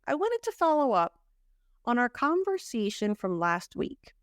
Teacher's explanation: because we're emphasizing last you hear the te a little more